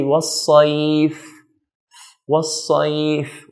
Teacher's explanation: Fa here at the end is a letter that sound flows, that the air flows with it when we're pronouncing this letter. So if you put your hand in front of you and say was-sayf, was-sayf, we'll notice air flows with it.